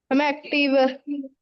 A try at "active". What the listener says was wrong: Active. And please pay attention to how I speak. It is not active. We don't stress. वो पंजाबी में करते हैं हम. वैसे active, active, passive. Like, in English, we don't put stress on certain syllables.